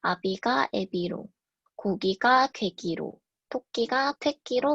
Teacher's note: 후속 모음 이와 이계 모음의 영향으로 아비가 애비로, 고기가 괴기로, 토끼가 퇴끼로 발음되는 것을 알 수 있습니다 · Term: 음라우트 현상